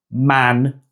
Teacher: The nye is actually one sound in a single syllable.